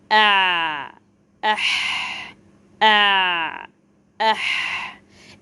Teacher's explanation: dans l'épiglotte al-ayn wal-ha